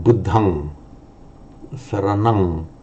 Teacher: So at the end of a word group on its own, for Pali, pronounce it as an ang. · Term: ng sound